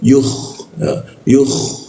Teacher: kha itu di atas jakun ya. Yuh seperti itu ada ngoroknya ya.